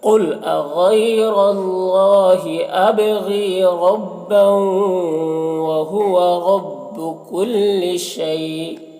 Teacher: کل شیء، یہاں پر یا لین ہے اور یہاں پر وقف کی صورت میں حمزہ کی 2 زیر کی تنوین سکون سے بدل جائے گا، تو پھر مد لین عارض ہوگا۔ اس میں طول، توسط، قصر تینوں جائز ہوتا ہے، لیکن قصر بہتر ہوتا، تو اس طرح سے پڑھیں گے۔